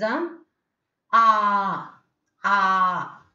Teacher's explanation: It is at the back part of the tongue, and your lips is unrounded.